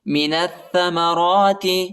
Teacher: بھی نون کو تھا کے ساتھ ملانا ہے، الف اور لام نہیں پڑھا جاتا، الف اور لام کے اوپر حرکت نہیں ہے